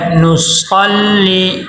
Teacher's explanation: والک، والک نصلی، نون کے اوپر پیش ہے، تو پیش ہونٹ گول اور کر کے ادا ہوتا ہے. نصلی آگے صاد حروف مستعلیہ میں سے ہے، صاد کو موٹا کرنا ہے